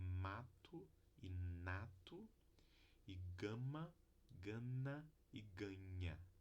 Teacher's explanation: Então essas três consoantes nasais do português são todas vozeadas. Não há consoantes nasais desvozeadas.